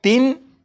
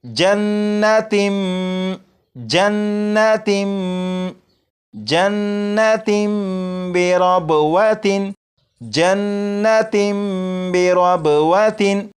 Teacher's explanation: जब तनवीन के बाद बा आ जाए तो तनवीन के अंदर जो नून साकिन की आवाज़ होती है उसे मीम से बदलकर गुन्ना करके पढ़ेंगे। जैसे यहाँ पर लिखा है तिन, इसे पढ़ेंगे तिम तिम।